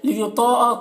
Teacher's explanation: الا میں الف مدہ ہے، 1 الف کے برابر کھینچیں گے۔ لیطاء طا کو پر پڑھنا حروف مستعلیہ میں سے ہے